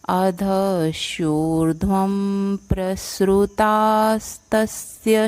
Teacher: व के ऊपर रफार के बाद अनुनासिक, तो उसका उच्चारण म आएगा क्योंकि अगला वर्ण प है